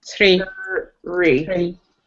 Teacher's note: you want the same R sound like when you read the word read, but it should come right after the TH